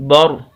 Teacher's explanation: با کو را کے ساتھ ملانا ہے، اس کو پر کر کے را کو موٹا کر کے پڑھنا ہے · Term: را موٹا